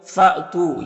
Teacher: فَأْتُو، یہاں پر حمزہ ساکنہ ہے تو جھٹکا لگے گا